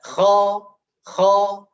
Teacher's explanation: infitah, yaitu terpisahnya lidah bagian depan dari langit-langit